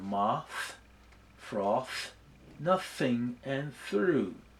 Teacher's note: produced by placing the tongue between the 2 teeth and letting the ear flow gently over the top of the tongue.